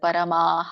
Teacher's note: ಮ ಕ್ಕೆ ಅ ಸ್ವರ ಕೂಡಿದೆ ಆದ್ದರಿಂದ ವಿಸರ್ಗ ಕೂಡ ಆ ಉಚ್ಚಾರಣೆಯಿಂದ ಎಂಡ್ ಆಗುತ್ತೆ